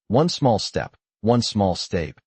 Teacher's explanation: The L is pronounced, but the word flows. One small step, one small step, the N and S blend.